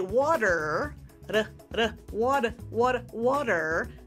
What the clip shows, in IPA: ˈwɔ t̬ər